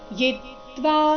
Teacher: ಇ ರಸ್ವ ಅದರ ಮೇಲೆ ಆಘಾತ ಬರಬೇಕು ಮುಂದೆ ತ್ವ ಎಂಬ ಸಂಯುಕ್ತ ಅಕ್ಷರ ಬಂದ ಕಾರಣ